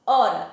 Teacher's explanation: eu não pronuncio o som do H. Eu pronuncio o som do O, do R e do A.